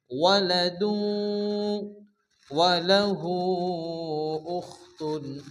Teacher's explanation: এই তানবিনকে ওয়ার সঙ্গে মিলিয়ে এক আলিফ গুন্না করে পড়তে হবে। ওয়ালাদু ওয়ালাহু উখতুন, হার উপর উল্টো পেশ ওয়া মাদ্দার মতো এক আলিফ টান হবে। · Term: ইদগামে বা গুন্না